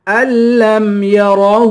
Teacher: را کو پر پڑھیں گے، ہاں پر الٹا پیش بھی ہے اور مد بھی ہے، اس مد کو 3 الف کی مقدار کھینچ کر پڑھیں گے